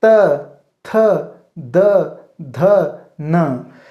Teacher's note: देखो जीभ कहाँ टकरा रहे हैं, दांत पे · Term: दंत्य